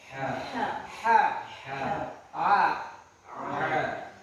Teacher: Wasatul haq di tengah tenggorokan. Itu sama dengan huruf ha. Ain dan ha ini makharijul hurufnya sama.